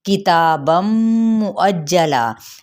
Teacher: تنوین دو زبر ہے اور میم کے ساتھ ملائیں گے تو ادغام مع الغنہ کا قاعدہ، کیونکہ تنوین کے بعد حروف یومن میں سے میم آ رہا ہے۔